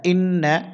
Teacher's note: নুনে তাসদিদ হচ্ছে গুন্না করতে হবে গুন্নাটির নাম ওয়াজিব গুন্না